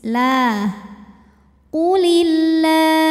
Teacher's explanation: lam pada lafaz Allah atau lam jalalah dibunyikan secara tarqik sebab huruf sebelumnya berbaris kasrah maka bacanya tipis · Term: tarqiq